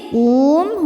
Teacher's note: min zaqquum ketika berhenti qum hukumnya mad arid lukun karena mad thobi'i bertemu dengan huruf yang disukunkan karena wakaf mad thobiinya wau sukun sebelumnya dhammah huruf yang disukunkannya mim maka qof-nya panjang boleh dua atau empat atau enam harakat asal konsisten dalam sekali baca